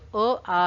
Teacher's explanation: जो आ है उनका उच्चारण स्थान होता है कंठ।